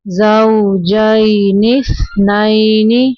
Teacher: فيها واو ساکن کے پیچھے زبر ہے واولین نرمی سے پڑھیں گے